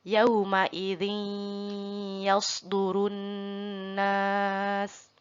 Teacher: Masuk ke hidung dulu, jadi dengung dulu, bukan hanya yauma idzi yasdurun nas, tidak ada dengungnya, tapi harus ada dengungnya.